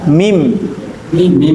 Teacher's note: Nah, jadi si nunnya itu dihilangkan, berubah menjadi mim yang murni. Dan ketika kita membaca mim yang murni, itu rapat dua bibirnya.